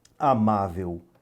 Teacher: Amável, também uma paroxítona, você vai contar de trás para frente, a sílaba tônica não é a última, é a penúltima